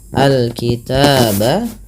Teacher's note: alif lam qamariyah, dibaca dengan jelas suara lamnya